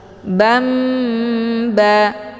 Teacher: Ini dinamakan dengan iqlab, sama seperti yang di atas ya. Jadi dibacanya tanwinnya diganti ke dalam bunyi mim sukun